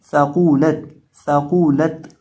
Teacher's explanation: ये जो सा है इसके अंदर सिटी नहीं निकालनी, आपने इसको साकूलत नहीं पढ़ना है, इसको पढ़ना है साकूलत, साकूलत।